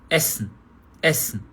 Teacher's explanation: Ó o primeiro E, curtíssimo, ó.